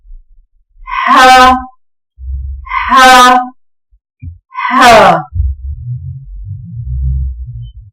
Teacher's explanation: ح، حلق کے درمیانی حصے سے ادا ہوتا ہے